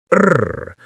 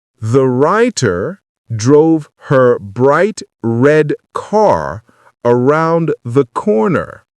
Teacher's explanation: The work is done by the back of the tongue. The tongue pulls back and bunches up, and the sides of your tongue press against your upper back teeth. The tip of your tongue shouldn't touch anything. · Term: American R